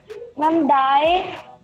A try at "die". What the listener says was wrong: It's not die. It's D. D-I-E is D in German.